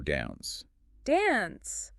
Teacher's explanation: in some other accents, you might hear a longer A, more like the A in father.